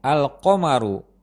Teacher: kita masih dapat dengan jelas mendengar sukun pada huruf lam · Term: huruf Qamari